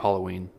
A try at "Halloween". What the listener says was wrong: When you say it, there's an O. Halloween? Halloween. But I guess, though, it's up to perspective, because, like, like hallway,